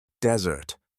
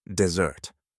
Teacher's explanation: when I said the word desert, the stress was on the first syllable